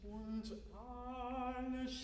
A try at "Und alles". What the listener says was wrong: That's when you go flat. Maybe with schnarchet you can do it a little bit more nasal.